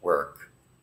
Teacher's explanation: it's almost like there is no vowels there it's like go right from the W to the our work